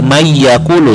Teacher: Mayyaqulu, enggak man ya dibacanya, tetapi mayyaqulu suara nunnya dimasukkan ke suara huruf selanjutnya